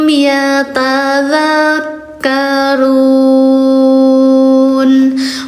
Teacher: U-nya empat dibacanya panjang empat harkat